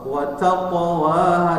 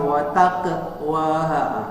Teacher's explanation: tapi ini qafnya termasuk huruf isti'la, huruf tebal, ya, maka dia ditebalkan meskipun dia qalqalah sughra.